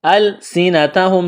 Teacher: السنتہم، سین میں سٹی کی آواز پیدا کریں گے، ہا میم پیش ہوم، میم ساکن کے بعد با ہے تو یہاں آواز ناک میں چھپائیں گے، غنہ کریں گے۔